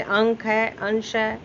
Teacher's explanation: बिंदु अनुस्वार में नाक से हवा निकलती है